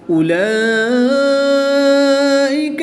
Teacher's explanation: کھڑی زبر کے بعد حمزہ اسی کلمے میں ہے تو یہاں پر مد متصل ہوگی، 3 سے 5 الف تک کھینچ کر پڑھیں گے